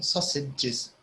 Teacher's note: So you can see that the letter A before the G here is very tricky because it's written sausages, but we don't say the A. It's like it's an I. It's like it's a short I.